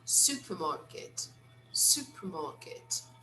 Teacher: They don't really pronounce the letter R.